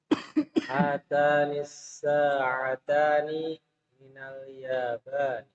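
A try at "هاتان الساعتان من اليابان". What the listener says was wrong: hatani as-sa'atani, panjangan ainnya. As-sa'atani minal yabani. Hatani as-sa'atani minal yabani.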